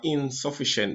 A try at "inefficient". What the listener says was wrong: So you have inefficient, but you said insufficient.